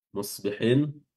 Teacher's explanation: Musbihin huruf shadnya dipertahankan ketebalannya